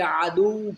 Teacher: stop کریں گے تو کچھ دیر کے لیے عدو پڑھیں گے، یہاں پر سانس روکیں گے کیونکہ شد ہے واو کے اندر،